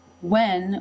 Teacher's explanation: with the shorter eh vowel, and you can see the tongue moving up into position for the N.